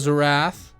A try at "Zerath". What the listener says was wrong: It's pronounced Zereth. Zerath? You're putting it as a Z. You're saying Zerath. You're putting Z-E-R. Every time you've said it, I have internally cried.